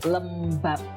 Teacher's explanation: jadi menjadi P, bunyi P, tapi tanpa aspirasi, tidak ada hembusan nafas di sana ya